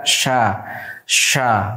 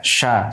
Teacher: Shin sifatnya hams yang membuat, ya, nafas itu mengalir ketika kita mengucapkan. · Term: sifat hams